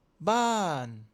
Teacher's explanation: La voix doit commencer haut et descendre de façon nette et rapide. Pense à une expression de surprise ou de déception, comme quand tu dis "Oh non!" avec une voix qui chute brusquement. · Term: Le ton descendant